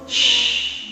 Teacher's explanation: Dari tengah lidah. Ketemu langit-langit. Shh. Punya sifat tafashi. · Punya sifat tafashi. Banyak angin di dalam mulut kita. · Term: huruf shin